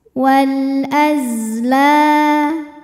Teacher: Wal azla, la hukumnya mad tabi'i dhahiri karena ada alif didahului harokat fathah, maka lam panjang 2 harokat.